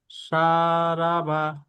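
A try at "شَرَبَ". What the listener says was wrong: শারবা, শারাবা নয়, শারবা, শারবা। পদাকে তাড়াতাড়ি পড়তে হয়, টান দেওয়া নিষেধ।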